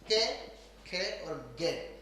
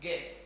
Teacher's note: जब आप गे बोलोगे तो आपके गले में कंपन होगा दोस्तों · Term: सघोष